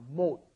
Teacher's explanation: Originally, it's 못, which is unaspirated, just a closing D sound, 못, right? But then when it comes up against an H, it becomes aspirated.